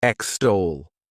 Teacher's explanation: The next verb is extol. To extol, this word has 2 syllables, and the stress is on that second syllable